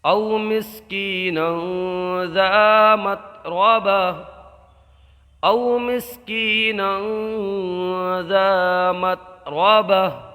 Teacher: یہاں واولین کا قاعدہ ہوگا، یہاں پر یا مدہ ہوگا، ایک الف کھینچ کے پڑھیں گے، نون کے اوپر دو زبر کی تنوین ہے، اس میں اخفا کا قاعدہ ہوگا، گنہ کر کے پڑھیں گے